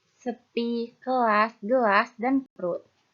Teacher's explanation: Selanjutnya ada bagian tengah atau mid dengan posisi lidah berada di pusat yaitu pada bunyi E